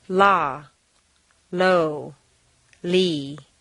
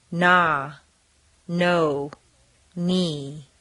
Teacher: L is lateral. Air flows around the sides of the tongue. The tongue is very tense.